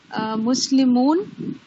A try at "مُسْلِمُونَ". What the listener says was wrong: مسلمونہ کہیں سے. آپ نے مسلمون کا صحیح کہا، لیکن میں چاہتا ہوں گرامیٹیکلی پورے حروف کے اوپر حرکت پڑھیں. اونا لگانا ہے.